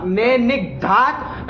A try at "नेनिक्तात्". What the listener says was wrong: ए दांत क्यों करने लगे? वो तो तातंग है ना, तो द कहाँ से कर ली उसको?